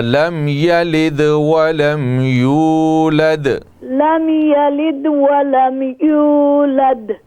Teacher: یہ دال پہ جب آپ وقف کرتے ہیں تو اس پہ شد نہ لائے کریں